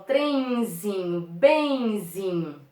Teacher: continua ocorrendo um ditongo decrescente nasal